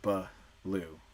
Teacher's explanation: the kid is trying to master saying all of the consonants they might insert an extra vowel to give them space to get it out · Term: addition